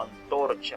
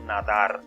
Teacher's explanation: la n es un fonema pero es Dental como alófono en palabras como antorcha y y a la vez es alveolar en palabras como nadar